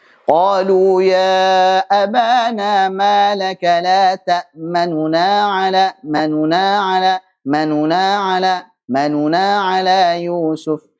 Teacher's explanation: Baca dengan lebih cepat, kemudian suaranya agak lirih. Kemudian tidak sempurna 3/3 harakat, tapi 2/3 harakat saja. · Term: ikhtilas